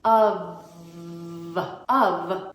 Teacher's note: we pronounce it with a v instead of an F makes a little Buzzy sound like a fly with your top teeth resting gently on your bottom lip